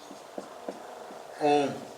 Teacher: 3 मात्रा का समय लगे, उसे कौन सा स्वर कहते हैं? प्लुत स्वर कहते हैं।